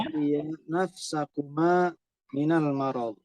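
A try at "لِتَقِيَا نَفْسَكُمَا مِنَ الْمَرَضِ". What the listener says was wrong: ahsan.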